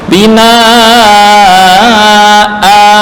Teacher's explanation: karena waqaf nun sukun ini diganti dengan alif bina a gitu sama dengan maan ya menjadi ma a bukan ma enggak selain tanwin fathah kasrah atau tanwin dhammah.